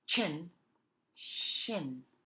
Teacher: CH is a quicker choppier sound the letter sh instead is a longer softer sound that you extend